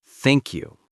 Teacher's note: See, your tongue goes between your teeth. That's not natural for many languages. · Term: th sound